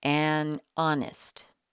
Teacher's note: Here the H is silent, so the first sound we hear is a vowel sound.